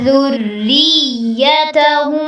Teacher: ذریتہم میں را کو باریک رکھنا ہے اور را کی زیر کو یا سے ملانا ہے اور تھوڑی سی شدت کے ساتھ آپ نے اس کو پڑھنا ہے.